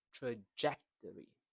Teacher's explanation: So the second syllable is stressed.